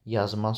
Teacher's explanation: Məsələn yazmaz sözünü götürsək iki hecalıdır. Amma vurğu ilk hecaya yox, sonuncu hecaya düşübdür.